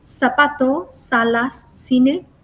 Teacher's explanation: when we pronounce them in Latin America, we use an S sound. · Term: ceseo